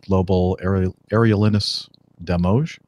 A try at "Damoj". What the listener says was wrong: Demoje. It's pronounced like an H. Demoje.